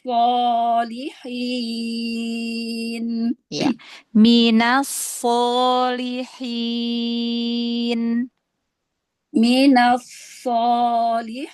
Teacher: Minaso, tebalkan lagi. Ini tafkhim tingkatan yang pertama, fathah setelahnya alif.